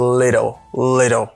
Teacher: For American English, you pronounce it like a fast D ou bien flat T